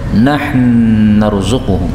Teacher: Nun ketemu nun bisa idgham.